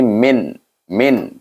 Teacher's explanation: Tak ada dengung, tak ada panjang. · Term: izhar khalqi